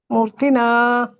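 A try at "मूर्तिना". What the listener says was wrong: ಮೂರ್ತಿನಾ ಅಲ್ಲ, ಮೂರ್ತಿನಾ ದೊಡ್ಡ ಮೂ ಇದೆಯಲ್ಲ ಅಲ್ಲಿ, ಓಕೆ, ಸ್ವರ ಕೂಡಿದೆ.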